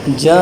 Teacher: اسے کم سے کم 4 الف کے برابر کھینچ کر لمبا کر کے پڑھنا ہوتا ہے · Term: مد متصل